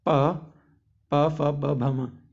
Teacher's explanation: प वर्ग जो होता है हमारा ओष्ठ्य व्यंजन होता है